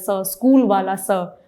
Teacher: दंत्य स, क्योंकि इसका उच्चारण दंत पर जब जिह्वा का स्पर्श है तो स का उच्चारण होता है